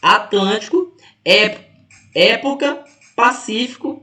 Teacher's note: porque a antepenúltima é mais forte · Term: proparoxítonas